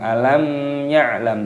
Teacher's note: Mim sukun bertemu dengan huruf ya, ini hukumnya dibaca idhar syafawi, dibaca jelas, tidak boleh didengungkan. Alam ya'lam, tidak boleh.